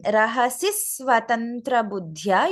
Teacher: In the first line, Rahasis Swatantra Buddhya, you should be able to hear a slight dvitva in the S in Swatantra Buddhya